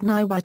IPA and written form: ˈŋiwat (ngiwat)